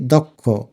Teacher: দকে আলতো করে ওকারের মত উচ্চারণ করি